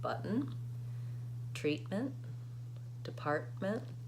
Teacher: I'm stopping that T. I'm going up to say button, and then I'm releasing right into that N sound. That's called the syllabic N.